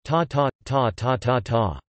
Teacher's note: Lisu has six tones: high, mid, creaky, mid, low, rising, and low check. That is, ta ta ta ta ta ta. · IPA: [tá ta̰ ta tà tǎ tàʔ]